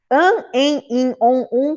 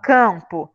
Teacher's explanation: põe a mão no nariz quando vocês falam campo. Observem que o nariz ele dá uma vibrada. Por isso, an, em, in, on, um, com M ou com N vão indicar que nós estamos vibrando. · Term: dígrafos vocálicos